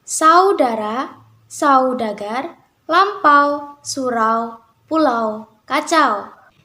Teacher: ada diftong naik menutup mundur aw